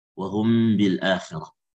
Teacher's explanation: Mim itu kan dari syafah dan dari syafawi. فينطق حرف الميم على صفة بين الإدغام والإظهار مع مراعاة الغنة في الميم بمقدار حركتين، ولذلك يسمى أو سمي إخفاء شفويا وهم بالآخرة. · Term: ikhfa syafawi